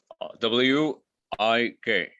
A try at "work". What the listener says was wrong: No, WORK. So what I'm hearing when you say it is this: WIRK, work, right? But WORK is work.